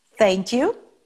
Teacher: É língua, dente, não tem nada aqui na garganta.